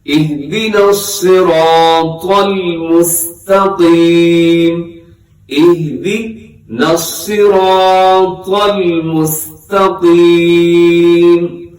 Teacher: اہدنا الصراط المستقیم، آگے کیا ہے جی، مستا سین میں سیٹی ہوتی ہے، مستا کو باریک پڑھا جاتا ہے اور قاف موٹا پڑھا جاتا ہے۔ قاف کی نیچے حرکت ہو، قاف کے اوپر حرکت ہو، قاف ساکن ہو، ہر حال میں قاف کو موٹا پڑھا جاتا ہے۔ تو مستقیم غلط ہے، مستقیم قاف موٹا کر کے پڑھنا ہے۔